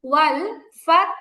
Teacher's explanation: ফায়ের পরে তাটাকে ধরে রাখবেন, তাটা ছেড়ে দিবেন না। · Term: সাকিন